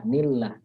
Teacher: Tarkik ya, tipis. Karena lafaz jalalahnya didahului oleh huruf berharokat kasrah.